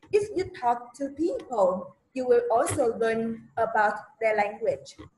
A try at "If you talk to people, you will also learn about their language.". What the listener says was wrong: Cái ngữ điệu nghe nó sao sao vậy? Ý là if you talk to people, gì nghe nó cứ ẻo, cái ngữ điệu nghe nó không có được chính xác, nó không có tự nhiên lắm đó.